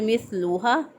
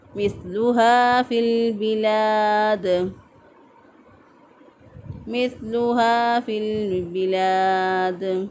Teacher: ہا زبر الف ہا، اس کو کھینچ کے پڑھنا ہے